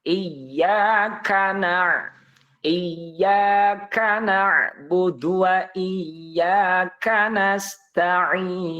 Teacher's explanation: ketika melafalkan kaf, dia harus mengeluarkan napas. Itulah sifat huruf kaf, yaitu hamas.